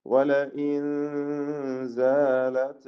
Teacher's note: സാക്കിന നൂൻ സായിന് മുമ്പിൽ ഇഖ്ഫ ചെയ്ത് മറച്ച് മണിച്ചോതേണ്ടതാണ്